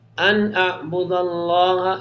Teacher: نون ساکن کے بعد حرف حلقی میں سے اظہار ہوگا